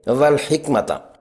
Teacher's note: دونوں ساکن حروف کو قلقلہ سے بچا کر پڑھنا چاہیے